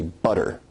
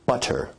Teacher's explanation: notice where we write it with two T's in English that your tongue is producing a tap sound there rather than a full stop or plosive sound